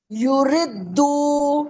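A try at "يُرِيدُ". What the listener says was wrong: یردو کیوں؟ را یا زیر یا مدہ ہے، کھینچیں. ارے یا پیش یو، را یا زیر یریدو. یریدو ہے. یریدو نہیں ہے نا، یریدو.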